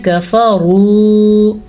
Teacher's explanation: را کو پر پڑھنا ہے کیونکہ را کے اوپر پیش ہے. جب را کے اوپر زبر یا پیش آ جائے تو را پر پڑھی جاتی ہے، اگر را کے نیچے زیر آ جائے تو را باریک پڑھی جاتی ہے.